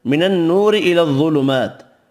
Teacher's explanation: نون مشدد پر غنہ کریں گے، واو مدہ کھڑی زبر ایک ایک الف کی مقدار میں کھینچ کر پڑھیں گے۔